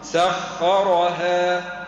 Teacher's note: سخرها الخاء والراء مفخمين